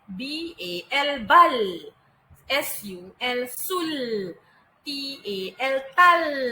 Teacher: L, lidah awak naik di belakang gigi tetapi bunyi dia agak tebal. L, L, L. Jadi, bila awak sebut suku kata KVK dengan huruf L di belakang, bunyi dia akan lebih tebal.